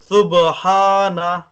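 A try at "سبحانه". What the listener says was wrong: شاباش.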